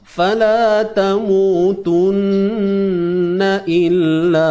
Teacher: Okey, nun bersabdu ni kita kena dengung lah. Dan kalau nun bersabdu ni ialah apa nama kita sebut, kadar dengung yang paling atas sekali.